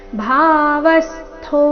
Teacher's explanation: ಭಾವಸ್ತೋ ವ ಮೇಲೆ ಆಘಾತ